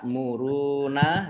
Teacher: wawu sukun matobi'i dibaca panjang 2 harokat